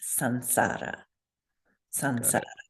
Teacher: the S is a fourth Varga sibilant S. So we would change it to an N